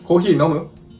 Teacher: Kung nanonotice ninyo, pataas ang tono ng nomu. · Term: rising intonation